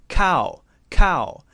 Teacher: But then we have k, cow, cow. So the k does stop the voice for a moment, and then we continue.